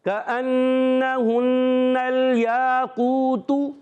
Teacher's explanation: الف مدہ بھی ہے واو مدہ بھی ہے. دونوں کو ایک ایک الف کھینچیں گے. مگر جیسے ہی تا کی پیش آئے اس کو نہیں کھینچیں گے.